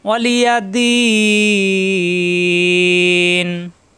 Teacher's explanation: অক্ফ হলে লাস্টের হরফে সাকিন হয়ে যায়, তখন এই দি মাদের হরফ, মাদে আর দি 3 আলিফ টান হয়ে যাবে, মাদের হরফে পরের হরফে অক্ফ হওয়ার কারণে নুনে সাকিন হয়ে যাবে।